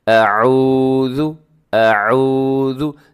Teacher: اس واو ساکن سے پہلے جب پیش ہو تو واو کو لمبا کر کے پڑھا جاتا ہے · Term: واو مدہ